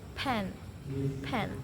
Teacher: itu namanya bunyi voiceless atau unvoice. Dia termasuk dalam bilabial karena e bibir atas dan bibir bawah saling bertemu dan plosif karena letupan berletup.